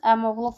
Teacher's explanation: Burada i saiti düşəcək, o isə uzanmadan tələffüz ediləcək. Yəni, söz əmoğlu formasında tələffüz ediləcək.